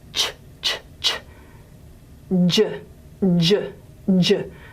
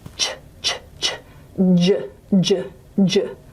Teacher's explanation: ch and j are voiceless and voiced pairs.